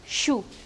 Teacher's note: It is described as a voiceless palato-alveolar fricative consonant.